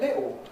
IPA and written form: ˈlɪʔo (little)